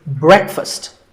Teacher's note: Break with a short eh sound